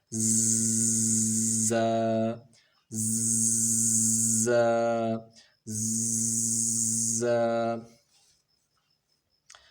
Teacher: ز میں سیٹی کی آواز آنی چاہیے۔ ز میں سیٹی کی آواز کیسے آئے گی کہ دونوں دانتوں کو ملا لیں گے اور زبان کی نوک نیچے کے جو دو دانت ہیں سامنے کے، جن کو ثنایا سفلی کہتے ہیں، ان کی نوک کے ساتھ لگائیں گے تو یہ آواز بن جائے گی ز، ز، ز۔ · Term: سیٹی والے حروف